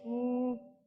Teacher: वाव मद्दा को एक अलिफ के बराबर खींचकर पढ़ेंगे